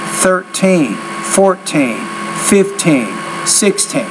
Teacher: what you got to be careful about with numbers of te you put stress on the second syllable